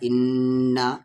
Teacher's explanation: नून पे शद है तो गुन्ना होगा